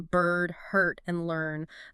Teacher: the rolled er sound where the tongue curls back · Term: rolled sound